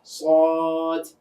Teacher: সদের মাখরাজ জিহ্বার আগা নিচের দাঁতের পেট, সদ। কিন্তু আওয়াজটা আমরা কিন্তু মুখের ভিতরে মোটা করছি। সদ যদি চিকন হয় তাহলে কিন্তু শব্দ করতে গেলে ওটাকে সিনের মতো শোনাবে।